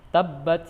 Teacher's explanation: karena huruf akhirnya huruf Qalqalah dan dia bertasydid maka harus diberi penekanan terlebih dahulu baru dipantulkan